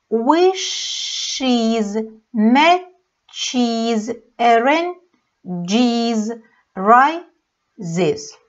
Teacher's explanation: Ну и объясняла это тем, что просто неудобно несколько раз говорить «с-с» или «ш-с». Если у нас звучат звуки на конце глаголов «с», «ш», «ч», «дж» или «з», то окончание будет звучать «из».